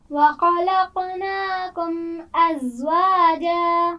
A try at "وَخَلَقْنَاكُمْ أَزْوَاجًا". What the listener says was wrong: خا کے مخرج کو واضح کیجیے. وَخَلَقْنَاكُمْ. تھوڑا سا پور کیجیے. وَخَلَقْنَاكُمْ.